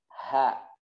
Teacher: adanya dorongan nafas di keluarkan didorong